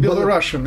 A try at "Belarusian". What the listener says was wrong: We should pronounce it Belarusian. Belarusian is one S, not SH. Belarusan,